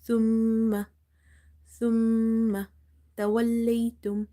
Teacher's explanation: Now when you're reading the word thumma, you see there is a shadda on mim, so you have to do ghunna in mim sound.